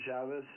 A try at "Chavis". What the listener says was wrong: My name is pronounced with a long A.